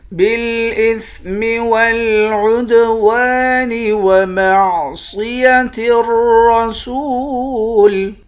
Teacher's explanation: عین کو دال کے ساتھ ملا کر دال پر قلقلہ کریں گے۔